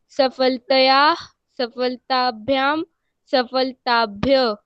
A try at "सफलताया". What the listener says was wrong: सफलताया नहीं, सफलताया, है ना, सफलताया, ठीक है, तया नहीं बोलना है, ताया।